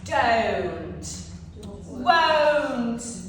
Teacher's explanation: starts with a relaxed mouth and then it rounds up into O.